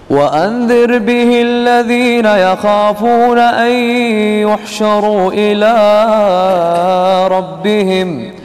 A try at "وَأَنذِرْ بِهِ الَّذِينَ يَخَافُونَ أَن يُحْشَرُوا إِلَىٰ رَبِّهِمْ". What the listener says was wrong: يحشروا فيها المد إلى ربهم ما فيها مد. ربهم. وأنذر به الذين يخافون. وأنذر به الذين يخافون.